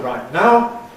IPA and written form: ˈraɪt ˈnaʊ (right now)